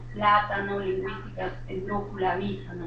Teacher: llevan el acento prosódico en la antepenúltima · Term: palabras esdrújulas